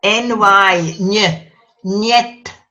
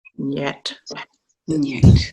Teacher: N as in English, but next to a slender vowel, it goes NY, ny, niet. And the D like again a th, so niet, Njet.